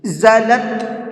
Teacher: لام کو تا میں ملا کے پڑھیں گے، لام تا زبر لت، یہ بیچ میں الف لام جو ہے یہ نہیں پڑھے جائیں گے۔